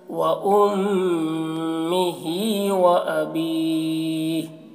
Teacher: میم مشدد ہے تو غنہ کے ساتھ میں، اس طرح، وَأُمِّهِ وَأَبِيهِ، زیادہ کھینچ کر رکیں گے، وَأَبِيهِ